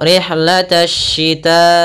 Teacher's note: dia termasuk daripada huruf alif lam syamsiyah cara membacanya Alif l lamnya tertulis tapi tidak dibaca